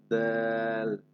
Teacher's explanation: দালটা শক্ত, শক্ত আওয়াজে তবে পাতলা করে আপনি উচ্চারণ করতে হবে